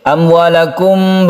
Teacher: mim mati bertemu dengan wau kita sebut dengan izhar syafawi izhar artinya jelas dan tidak berdengung syafawi artinya bibir bahwa makhluk dari mim itu adalah di bibir